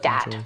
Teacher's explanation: using something like a D sound for where you see a written TH. So dat for that. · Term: TH stopping